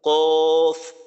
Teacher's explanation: এরপর 5 নম্বর মাখরাজ জিহ্বার গোড়া হইতে একটু আগে বাড়াইয়া তার বরাবর উপরের তালুর সঙ্গে লাগাইয়া উচ্চারিত হয় কাফ